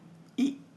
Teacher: संवृत स्वर, छोटी ई, बड़ी ई, छोटा ऊ, बड़ा ऊ, इसके उच्चारण में कम मुख खुलता है। देखो, जिसमें कम मुख खुले, जैसे ई, बोल के देखो, ई, कम मुख खुला, पूरा नहीं, तो ये क्या है, संवृत।